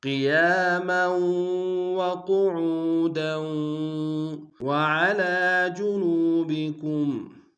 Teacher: کھینچیں گے، میم کی تنوین کو واو کے سامنے لائیں گے، واو کے اوپر شدہ زور دیں گے، قاف کو موٹا ادا کریں گے ، عو میں واو مدہ ہے کہ دال میں کھینچیں گے،